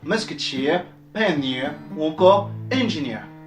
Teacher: l'accent se retrouve en dernière syllabe